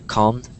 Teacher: a lot of people say it quickly and so it just sounds calmed and you don't hear the D at the end